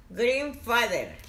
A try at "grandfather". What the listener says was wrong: No es green, tía. No es green. Es grandfather. Grandfather.